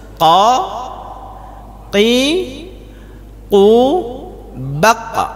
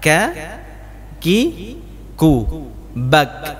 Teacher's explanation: huruf qaf tidak berangin. Tapi kalau ini berangin, Pak. Ini yang baru berangin, huruf kaf.